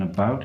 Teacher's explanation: the first syllable in about is a schwa